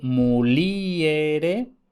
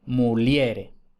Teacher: Muliere, la I es tónica, mientras que muliere, la E es tónica.